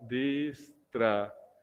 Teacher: esta palabra es grave, porque el acento está recayendo en la penúltima sílaba.